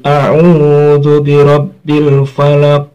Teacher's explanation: namanya qolqolah kubro pantulannya lebih besar